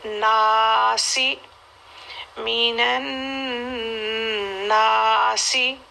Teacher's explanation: من نون کو 2 حرکت تک ہولڈ کرنا ہے